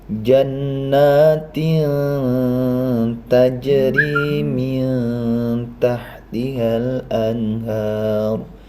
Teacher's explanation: menyuarakan nun mati ini ujung lidah hampir menyentuh pangkal dua buah gigi atas sesuai dengan makhrijul huruf dari tho dal dan TA